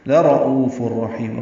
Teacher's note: گے، لام کو لمبا یہاں پہ بالکل نہیں کرنا، لَرَؤُوفٌ الرحیم، را پر پڑھیں گے، او واو مدہ ہے، دو حرکات لمبا ہے ، فا کو را سے ملانا ہے، ادغام ہے، یہ ادغام